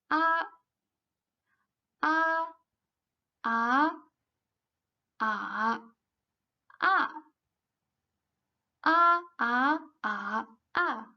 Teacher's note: The first single phyllo a, when we pronounce it, the mouth is wide open, the tongue is at its lowest, the lips are unrounded. It sounds like a of father, and it has 4 tongues.